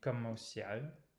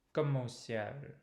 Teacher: So the enchaînement is pretty subtle in comme au ciel. The M gets pulled forward to the preposition au.